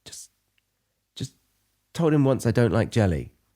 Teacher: at the beginning, he said a very, very subtle just. He almost it was almost inaudible. It was just just just told him once I don't like jelly.